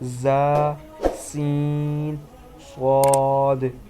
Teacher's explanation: ان 3 حروف زا، سین، صاد کو ادا کرتے وقت سیٹی کی طرح تیز آواز نکلتی ہے، اس لیے ان حروف کو حروف صفیریہ یعنی سیٹی والے حروف کہتے ہیں۔